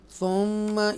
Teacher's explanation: थुम्मा याद रखिएगा मीम मुशद्दा और नून मुशद्दा, यानी कि ये नून मुशद्दा और ये मीम मुशद्दा जब भी आएंगे उनको गुन्ना करेंगे, नाक में आवाज़ लेके जाएंगे, नस्लाइजेशन।